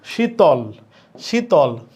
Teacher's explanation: ল এর সাথে যদিও অ আছে কিন্তু শীতল বললে শীতল বললে সেই অ এর উচ্চারণ হচ্ছে না · যেরকম শীতল, শীতল যদিও ল বললে লয়ের সাথে একটা অ উচ্চারিত হয়, কারণ আমরা জানি, আমরা প্রথম লেকচারে শিখেছি যে অ এই বর্ণ, এই ধ্বনিটার উচ্চারণ সকল ব্যঞ্জনের সাথে হয়। তার মানে লয়ের সাথে যদিও অ আছে, কিন্তু শীতল বললে, শীতল বললে সেই অয়ের উচ্চারণ হচ্ছে না। তার মানে এখানে শেষে আছে ব্যঞ্জনের উচ্চারণ। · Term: বদ্ধাক্ষর, ব্যঞ্জনান্ত অক্ষর